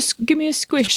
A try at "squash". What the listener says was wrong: Squash. It's not a squish.